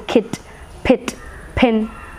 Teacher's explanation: It is unrounded front, half close vowel.